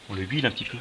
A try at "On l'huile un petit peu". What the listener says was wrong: On l'huile un petit peu peut-être. On l'huile un petit peu peut-être. Liaison. C'est un H muet.